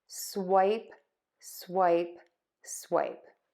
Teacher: start by opening your mouth your tongue tip is going to be low then we're going to close to a smile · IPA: /swaɪp/